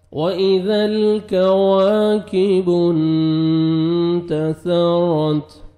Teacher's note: واو کو لپس کو راؤنڈ میں لے کے جائیں گے، اچھی طرح واو ادا ہوئے گا